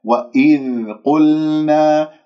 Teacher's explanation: والقاف مفخمة مرتبة ثالثة لأنها مضمومة أضم الشفاه، قل لا تسحب ضمة القاف إلى اللام، تقول قل.